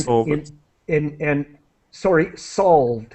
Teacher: D sound as quick as possible, and the E here is silent